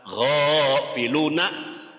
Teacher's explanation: Kemudian ghafiluna, gho di atas hin itu ada tanda panjang, harokat fathahnya berdiri, dibaca panjang 1 alif, namanya mad asli. Panjangnya 2 harokat